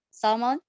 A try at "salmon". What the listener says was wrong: Salmon. Nggak pakai L. Pada kata a, salmon. Ini ada swa, jadi nggak ada L-nya. Salmon.